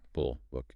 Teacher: For the lax in pull, the lips still maintain a rounded shape, but it is a soft, medium relaxed circle. There's no squeezing. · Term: lax counterpart